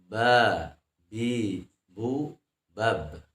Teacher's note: itu adalah makhrajnya asyafatain antara dua buah bibir dan dibacanya posisi bibir tersenyum atau dibaca dengan sifatnya istifal atau dibacanya ringan J ba bi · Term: makhraj ba